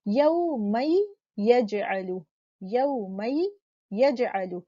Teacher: तो जब नून सुकून के बाद या मुतहर्रिक आता है तो हम यहाँ पर मुदगम कर रहे हैं नून को, यानी नून का मखरज या में मर्ज हो रहा है, तो नून तो बाकी नहीं रहा है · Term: इदगाम बेगुन्ना